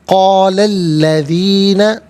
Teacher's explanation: قال الذین، قولا میں لام پر زبر ہے، اسے الذین کے لام کے ساتھ ملائیں گے، درمیان میں سے الف یعنی حمزہ کو حذف کیا جائے گا، اسے ہم پڑھیں گے قال الذین کفروا، را پر پیش ہے، را کو پر کر کے پڑھیں گے